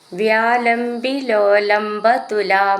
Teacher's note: അവിടെ ലാസ്റ്റിൽ വിസർഗ്ഗം ഉണ്ട് അപ്പോ വിസർഗ്ഗത്തോടുകൂടെ നിർത്തണം